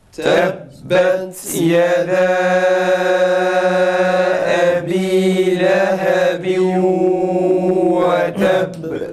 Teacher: Tekrar vav'da gunne tok çıksın. Vav'ı gunneli okuyoruz.